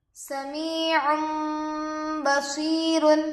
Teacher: یا ساکن سے پہلے زیر ہے، یا مدہ ہوگا، تھوڑا کھینچیں اور معروف پڑھیں · عین پر دو پیش ہے، تنوین ہوگا، تنوین کے بعد با آ کر ہے، اس لیے گنہ کے ساتھ اخفا ہوگا